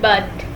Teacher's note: We use A in word but. It is a central back unrounded vowel. It is pronounced when tongue is in central back position in the mouth.